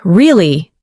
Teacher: when you ask a question like, really? Your voice goes up slightly at the end.